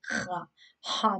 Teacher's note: Now ha this is pronounced from the top part of the throat, like you can like feel your in the throat itchy like ha, but not too much.